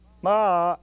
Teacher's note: Now, on a purely phonological level, that sound begins with an attack, an ictus, ma, and ends in a descending glide, ma. That's the way we speak, ictus plus glide.